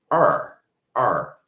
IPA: r